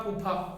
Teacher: ये आपका फे ऐसा व्यंजन हुआ जिसे बोलते वक्त आपके अंदर से इतनी तेजी से प्रेशर निकलेगा हवा का कि आपके मुंह की सारी हवा बाहर निकलेगी